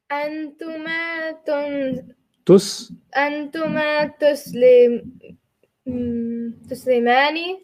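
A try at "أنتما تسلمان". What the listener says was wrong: That's it.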